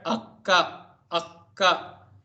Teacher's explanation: Now, if the first one, which is going to be pronounced half, for example, in the word akka, akka, you pronounce ka twice, and the first ka comes half